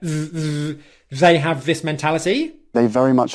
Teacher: so you've got two voiced th sounds there